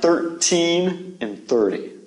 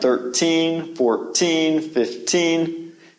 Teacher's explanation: You notice that when we said these words, the emphasis came at the end.